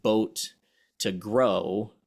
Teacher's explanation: going from like boat to grow would be subtractive because you're dropping the T sound